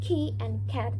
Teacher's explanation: They are the k sound. You can hear that they are aspirated when we pronounce key and cat